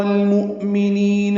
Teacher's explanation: لام ساکن پہ اظہار قمری ہے، حمزہ ساکن جھٹکے سے ادا ہوگا، نی یا مدہ ہے۔